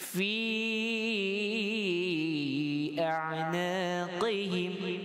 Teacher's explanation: Mad qasir, mad tabi'i, 1 alif 2 harakat. Kita baca lebih daripada 5 harakat yang panjang pada fi kalimah fa berbaris kasrah.